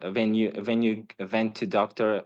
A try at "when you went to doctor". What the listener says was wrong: Again, when you vent, the was sound like a v and the v's sound like a w. So there are some noticeable, I think, problems with the candidate's v and w.